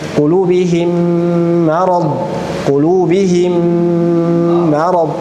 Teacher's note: Mim pertama masuk ke mim kedua. Kemudian cara gunnahnya, gunnah lewat hidung full.